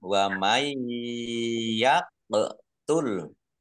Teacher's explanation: Nun sukun bertemu dengan huruf ya. Bacaan idgham di gunnah masuk dengan mendengung, yaitu mendengung ya. Tahan Kira-kira 2 harokat biar tampak dengungannya.